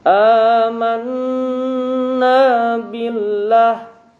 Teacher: Nah, nun bertasydid atau mim bertasydid hukumnya adalah gunnah. Jadi ditahan 2-3 ketukan.